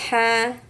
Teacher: ini ha tenggorokan tengah